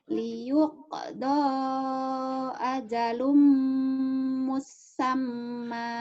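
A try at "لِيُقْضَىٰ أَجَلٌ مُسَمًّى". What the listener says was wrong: Bukan. Bukan musamma. Yang tasjidnya kan di mim sama mim. musamma sinnya ada tasjidnya.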